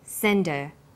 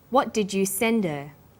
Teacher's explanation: Send is the strong form and her is weak. Because her is not stressed, we drop the initial h sound. So it's pronounced sender.